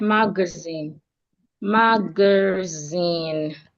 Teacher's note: We're stressing the last part, zine.